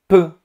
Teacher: No caso de V, o ar não para totalmente. No caso de P, o ar para totalmente.